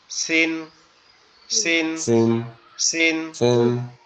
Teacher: আমরা যেখান থেকে ঝা উচ্চারণ করলাম এখান থেকে উচ্চারণ হবে সিন, সিন। সিন জিহ্বার আগা নিচের দুই দাঁতের আগার সঙ্গে লাগবে, লেগে উচ্চারিত হবে